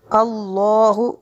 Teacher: الا ان یشاء اللہ، اللہ لفظ سے اللہ کو پر کرنا ہے کیونکہ اس سے پہلے والے لفظ پر زبر ہے.